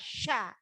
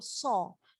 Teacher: Ketika sya itu ada di mulutnya menghembuskan nafas sya. Tetapi kalau so hanya ada di bibir so.